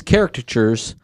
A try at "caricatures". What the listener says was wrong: Sounded like you said carrot chairs.